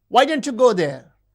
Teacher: The high fall in wh question refers to surprise.